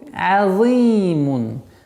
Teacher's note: Касра удлиняется в размере двух огласовок.